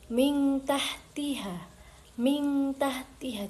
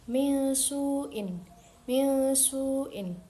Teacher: Samar tidak jelas seperti idhar dan tidak sepenuhnya lebur seperti idgham. Jadi, enggak boleh terlalu jelas dan tidak boleh terlalu dengung. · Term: ikhfa hakiki